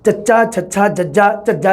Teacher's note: ਸਾਹ ਦੀ ਹਵਾ ਨੂੰ ਦੰਦ ਪਠਾਰ ਤੋਂ ਸਖਤ ਤਾਲੂ ਦੇ ਦਰਮਿਆਨ ਜੀਭ ਦੇ ਬਲੇਡ ਦੁਆਰਾ ਰੋਕਿਆ ਜਾਵੇ। ਟਿਪ ਤੋਂ ਬਾਅਦ ਵਾਲਾ ਹਿੱਸਾ ਜੀਭ ਦਾ ਬਲੇਡ ਤਾਲਵੀ ਧੁਨੀ ਦੇ ਵਿੱਚ ਕਿਹਾ ਜਾਂਦਾ ਉਸ ਨੂੰ।